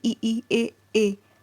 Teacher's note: अग्र स्वर कौन से होते हैं जिव्या के अग्र भाग से उच्चारित होते हैं